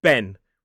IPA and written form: ben (Ben)